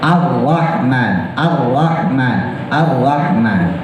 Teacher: Jangan dicadelin, nggak jadi L nggak, tetap R tapi ya getarannya nggak banyak.